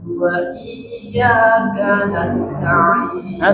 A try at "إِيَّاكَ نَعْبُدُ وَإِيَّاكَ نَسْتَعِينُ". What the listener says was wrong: Sofirnya jangan lupa. Nas.